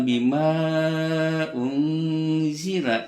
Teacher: Mad jaiz panjangnya boleh 2-5 harakat karena munfasil berpisah antara mad dan hamzahnya. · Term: mad jaiz munfasil